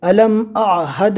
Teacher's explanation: الف کو نارمل پڑھنا ہے اور عین کو حلق سے اچھی طرح ادا کرنا ہے